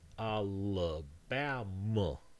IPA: ˌæləˈbæmə